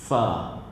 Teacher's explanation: Makhraj huruf fa ni adalah bila mana gigi atas bertemu dengan bibir bawah.